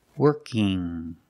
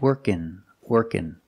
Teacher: I have ing, where I make the sound in my nose, working. Or I can make the N sound, working, working.